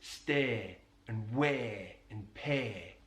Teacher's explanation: he elongates the diphthong A. So he says stare and wear and pay, rather than stay, weigh and pay.